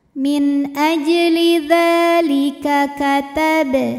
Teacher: maka bnya dipantulkan dengan pantulan yang kecil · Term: Qalqalah sugro